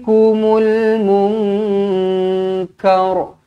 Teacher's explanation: Nun kosong bertemu dengan Kaf ikhfa Hakiki dengungkan dua harakat